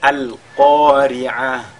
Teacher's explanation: lorsqu'on marque donc une pause sur ta marbuta, n'est-ce pas? On le lit comme un ha.